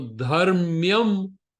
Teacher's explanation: the half Ma after Dha is not considered a varna. All they do is make the previous varna longer. So Dharmyam, Dha is considered a longer varna.